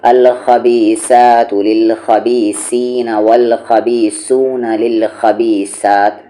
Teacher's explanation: गलती कैसे होती है, सा की जगह सीन पढ़ देना